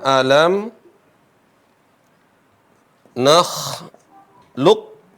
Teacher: Ini qaf enggak dibaca qalqalah. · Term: idgham